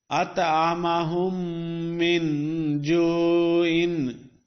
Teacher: this meme of whom is going to join the other meme of the next letter, min. So there is no jazm on the meme of whom, and instead there is a shad on the meme of min, because both these memes are pronounced as if they are with shadda.